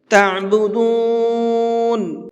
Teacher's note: یہاں پر یہ عین ہے، عین کو حلق سے نکال کر کے پڑھیں گے